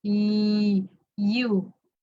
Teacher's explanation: Okay, and then of course, the letter Y, when you glide it, it's voiced y, you, ye. It's voiced also, so there's vibration when you pronounce y, you.